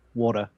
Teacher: I say water without the t.